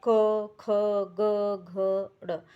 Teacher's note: इनके उच्चारण में जीभ का जो है पश्च भाग मतलब पीछे वाला जो कोमल तालु को स्पर्श करता है · जीभ का पीछे वाला भाग है, वो पीछे जो है कोमल तालु है उसको स्पर्श करता हुआ हो रहा है। ठीक है, तो जो कै पूरा कै वर्ग है, कै वाली लाइन है, वो क्या है, कंठ है।